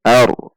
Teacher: Ar, alif fathah, ra sukun. Ra sukun sebelumnya fathah, maka ra sukun dibaca tafhim atau tebal.